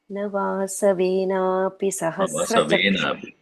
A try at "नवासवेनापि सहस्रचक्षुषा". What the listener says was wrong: नवासवेनापि नवा it's very low now the tone नवासवेनापि सहस्रचक्षुषा